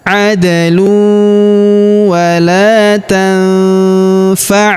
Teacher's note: nun sukun bertemu huruf fa, maka nun sukunnya melebur ke huruf fa, kita baca dengung dan samar.